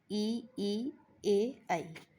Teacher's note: जीभ का अगला भाग प्रयोग होता है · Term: अग्रस्वर